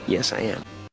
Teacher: nas 2 partes eles fecham os lábios quando eles terminam de pronunciar o am